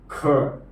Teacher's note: इनका उच्चारण करते हैं दूसरे और चौथे व्यंजन का तो इसमें अधिक या ज्यादा प्राण वायु या प्राण तत्व या हवा या सांस का सहारा होता है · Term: महाप्राण